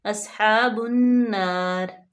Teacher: صاد جو ہے اس کو پر پڑھیں گے کیونکہ حروف مستعلیہ میں سے ہے، ہا پہ فتح اشبائی ہے تو اس کو ہم نرمی سے ادا کریں گے اور لمبا بھی کریں گے، اصحاب النار۔